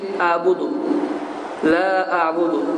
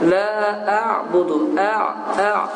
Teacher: Əliflə başlayıb biraz boğaz yəni sıxılmalıdır. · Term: ayn hərfi